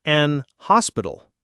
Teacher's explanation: in some British accents, the H in hospital is silent, so it becomes an hospital.